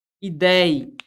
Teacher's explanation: Quando eu falo para você a palavra ideia, perceba que a palavra ideia, ela é composta, olha onde é que está a sílaba tônica, está no ei